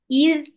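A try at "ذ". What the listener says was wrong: İz değil mi? İz peltek. İz.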